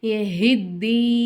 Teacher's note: மேல சின்ன மத் இருக்கறதுனால அதை மூணு அலிஃப் எக்ஸ்ட்ரா எழுத்து தீ அப்படின்னு நம்ம இழுக்கணும்